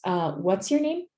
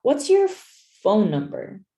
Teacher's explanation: It goes up and then goes down. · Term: intonation